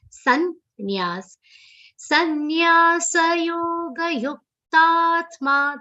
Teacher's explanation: The sa in between has to be pronounced complete.